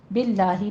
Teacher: باللہ میں لفظ جلالہ کو باریک پڑھنا ہے